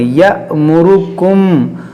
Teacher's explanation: یہ حمزہ ساکنہ ہے، اس کو ہم جھٹکا دے کر پڑھیں گے۔ یأمرکم اور میم ساکن کے بعد با ہے، یہاں پر اخفاء شفوی کریں گے۔